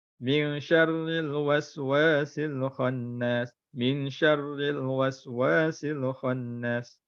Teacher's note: Tak dengung, tak sempurna dengung je. Tak cukup dua harakat seperti yang diperlukan.